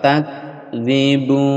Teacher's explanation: ada hamas di huruf kaf desis keluar, udara keluar